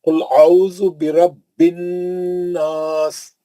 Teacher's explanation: नून पे तजदीद आने से अलिफ और लाम नहीं पढ़ा जा रहा है, शमसी हर्फ है।